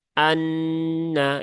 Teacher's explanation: A harus jelas ya bukan Ha tetapi a ya Anna kemudian nunnya bertasdid maka ya tunaikan tasdidnya